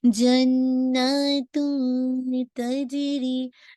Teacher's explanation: अब इसको हैवी नहीं कीजिएगा इख्फा को, क्योंकि ता इसका लाइट लेटर है ना , जन्नतुम तजरी, नॉट जन्नतुम, ऐसे करके साउंड आप उसको नाक